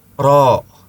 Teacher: Ketika mengucapkan ro sambil monyong menunjukkan dia menyertakan bibir. Padahal ro bukan huruf bibir.